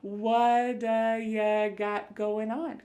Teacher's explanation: that T at the end of the word what is going to change to a D sound. This is really typical of American English where a T that's surrounded by vowel sounds is going to change to a D. It's called a flapped T and it just kind of uh rolls off your tongue in a smooth way.